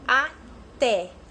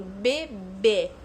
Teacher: e tá então por isso que elas recebem acento diferentes porque os sons são diferentes um é aberto que é o até e um é fechado que o bebê